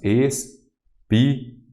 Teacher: Então, a antepenúltima sílaba é a tônica. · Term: proparoxítona